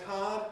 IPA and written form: haəd (Howard)